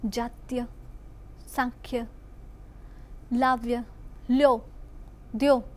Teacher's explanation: આગળ જોઈએ તો કેટલાક શબ્દોના ઉચ્ચારમાં ગુજરાતના કેટલાક ભાગોમાં ય શ્રુતિ થાય છે.